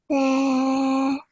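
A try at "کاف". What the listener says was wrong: Make sure you make the fa sound at the end as well, darling. Kaf.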